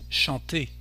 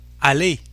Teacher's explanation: we don't pronounce the letter R in this case, we just say E instead